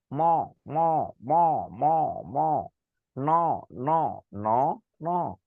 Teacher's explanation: যে বর্ণ উচ্চারণের সময় আমার নাক দিয়ে বাতাস বের হয় তবে তাকে বলে হচ্ছে নাসিক্য বর্ণ।